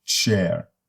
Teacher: they consist of a stop released into a fricative